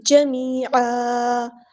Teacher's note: یا مد آئی ہے تو ایک الف کے برابر ہم یہاں پہ لمبا کریں گے، اور یہاں پہ ہم وقف کریں گے تو 2 زبر کو ایک زبر میں کنورٹ کرتے ہوئے ایک زبر بنے گی جمیعا، لیکن مد اصلی بھی کریں گے جمیعا.